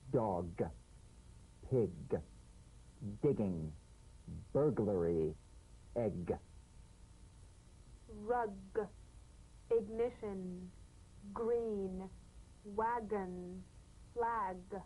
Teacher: feel a crisp tap and a voiced pulsation of the back of the tongue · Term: drumbeat G